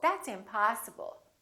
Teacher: we prolong the ah in the stressed syllable